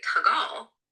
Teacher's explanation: >> Certainly. If you say tagal with a high tone, you might be referring to heavy he. But if you shift that to a low tone, tagal unmarked, you mean something closer to shoe or sandal.